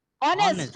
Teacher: H is actually written in the spelling but not pronounced. It's only honest. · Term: H silent